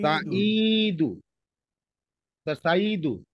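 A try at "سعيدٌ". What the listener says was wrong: সাইদুন, এটা হবে, হ্যাঁ, সাইদুন। হ্যাঁ, সাইদুন। সাইদুন তানবিন নিয়েছে, ঠিক আছে।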